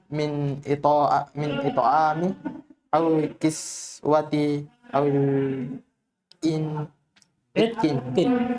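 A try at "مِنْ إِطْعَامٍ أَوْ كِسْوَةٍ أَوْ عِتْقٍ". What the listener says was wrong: semuanya ditanwin. Min it'amin au kiswatin au itkin sama.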